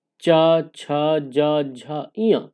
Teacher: चा वर्ग में चा, छा, जा, झा, इया, इनका उच्चारण तालु से होता है